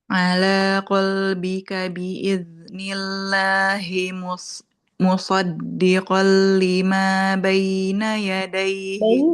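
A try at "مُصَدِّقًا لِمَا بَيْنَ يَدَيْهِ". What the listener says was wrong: Jangan B, tapi ba. Muswaddiqal lima baina.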